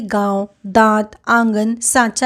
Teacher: अनुनासिक का जो उच्चारण है किससे हो रहा है नाक और मुंह से